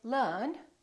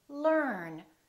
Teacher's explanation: the American R is never silent it's not silent at the end of the word and also before another consonant